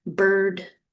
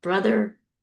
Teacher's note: because these are central vowels that indicates that the tongue is in the center of the mouth